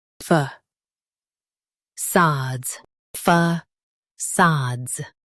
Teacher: Emphasize sods and soften the fa.